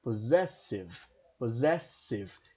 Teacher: Então perceba que eu tenho, apesar dos dois S's, eu tenho um Zzinho aqui. Significa que nesses dois S's eu tenho o som de Z. Então a pronúncia correta fica possessive.